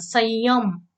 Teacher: संयम हा शब्द उच्चारताना संयम, य यावर विशेष त्या ठिकाणी जोर हा दिला जातो. मात्र आपण लेखन करताना य ला य जोडून लेखन करत नाही, त्याऐवजी काय करतो आहोत, स वर अनुस्वार देतो आहोत.